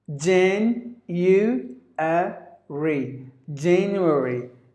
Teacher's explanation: There are 4 syllables in this word. January. And the stress is at the first syllable.